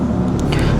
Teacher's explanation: mim sukun bertemu dengan ba dibaca ikhfa Ikhfa Syafawi maka di didengungkan